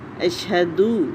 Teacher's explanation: شین کی تفشی کو، شاورنگ ساؤنڈ کو خوب نمایاں کریں